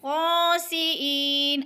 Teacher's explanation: قردۃ خاسئین، ای پہ یا مدہ ہو رہا ہے، یا ساکن سے پہلے حمزہ کے نیچے زیر ہے تو یا مدہ ایک الف کے برابر کھینچ کر پڑھیں گے